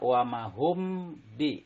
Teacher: mim mati bertemu dengan ba itu dinamakan bacaan Ikhfa Syafawi dan cara membacanya samar diantara dua bibir dengan mendengung jadi ditahan atau didengungkan antara dua sampai dengan tiga ketukan